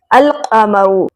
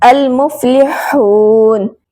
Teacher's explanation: اس میں لام کی آواز واضح رہتی ہے، اس میں لام کی آواز سائلنٹ نہیں ہوتی۔ جس طرح القمر میں الف لام میں لام کی آواز ظاہر ہو رہی ہے۔